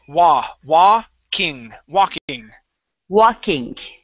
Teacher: without that L there that L is silent